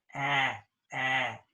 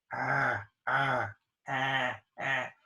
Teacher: the sound ah, like in cat, the tongue is very forward.